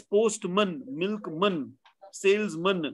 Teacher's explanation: When you add the word man to another noun, the noun word, the vowel sound becomes shorter. That's called vowel reduction.